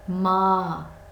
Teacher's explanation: ما الف سے پہلے والے حرف پر زبر ہے، ایک الف کے برابر لمبا کریں گے